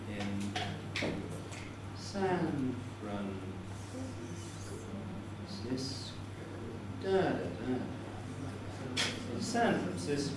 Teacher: Now, the mark in front of San tells you that I was using a falling head. San Fran is all falling. Cisco was a full rise.